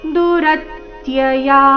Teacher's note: ದುರತ್ಯಯ ರ ಮೇಲೆ ಆಘಾತ